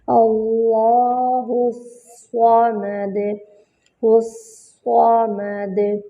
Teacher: ہاں کو صاد سے ملائیں گے، صاد پہ جو ہے وہ شد ہے تو صاد پہ جمع ہوگا اور صاد جو ہے وہ موٹا حرف ہے اور صاد میں جو ہے وہ سیٹی کی بھی آواز آتی ہے، موٹا حرف ہے تو اس سے موٹی سیٹی کی آواز آئے گی۔